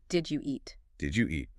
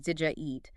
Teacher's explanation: When you say that quickly and naturally, the D and the Y sounds merge. It often comes out sounding like did ya eat. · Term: assimilation